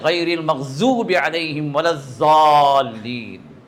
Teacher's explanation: ضاد پورا دبا کے نکالتے ہیں.